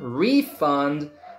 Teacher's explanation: if it's a noun first syllable gets stressed